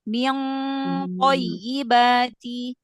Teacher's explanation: ikhfa nun sukun ketemu to langsung angkat pangkal lidahnya biar tebal